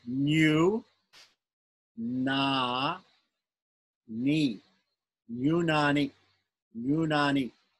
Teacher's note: The last syllable is short, but the other two are long.